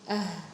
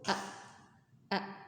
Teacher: Kalau ha di sukun, ah masih ada suara eee nafas dan masih ada suara yang mengalir ya.